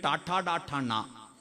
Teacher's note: നാവിന്റെ മൂർതാവ് അണ്ണാക്ക് കുത്തി പറയുന്ന അക്ഷരങ്ങൾ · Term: മൂർധന്യം